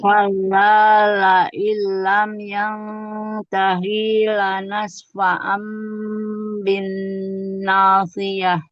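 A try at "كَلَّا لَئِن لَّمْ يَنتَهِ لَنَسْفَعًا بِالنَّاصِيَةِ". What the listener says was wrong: Yang tahinya, hi-nya jangan panjang, Bun. Lam yang tahi lanas.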